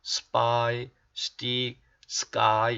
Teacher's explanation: 그래서 P, T, K가 붙으면 된 소리가 된다 하는 겁니다. S 다음에 P, T, K가 붙으면 된 소리로 발음이 됩니다.